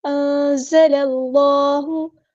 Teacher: اللہ کا جو لام ہے یہاں پہ ہم پور پڑھیں گے، ہیوی ادا کریں گے کیونکہ اس سے پہلے فتح یعنی زبر آئی ہے